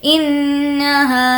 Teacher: انہا، نون پر تشدید ہے، غنہ کریں گے. انہا، ہا کو کھینچ کر پڑھیں گے کیونکہ الف مدہ ہے